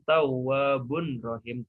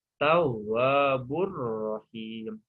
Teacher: Dibacanya tawwabur. Jadi idgham itu hukum tanwinnya dihilangkan, dimasukkan kemana? Ke ro ya, dileburkan. Jadi tawwabur, bukan tawwabun rohim, tapi tawwabur rohim.